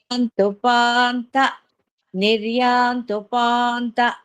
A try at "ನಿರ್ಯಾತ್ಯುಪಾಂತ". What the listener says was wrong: ತೂ ಅಲ್ಲ ನಿರ್ಯಾಂತ್ಯುಪಾಂತ ಅಲ್ಲ ಆಂಟಿ ತೂ ಹೇಳ್ತಾ ಇದ್ದೀರಾ ಟ್ಯೂ ಹೇಳ್ಬೇಕು ನಿರ್ಯಾತ್ ತ್ಯಾ ಅಲ್ಲ ಅಲ್ಲಿ ತಾ ಬರ್ಬೇಕು ಇಲ್ಲಿ ತ್ಯೂ ಬರ್ಬೇಕು ನಿರ್ಯಾಂತ್ಯುಪಾಂತ